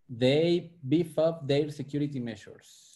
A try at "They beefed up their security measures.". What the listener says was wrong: Beefed. I want to hear the T on the end of beefed. Beefed up. Beefed up.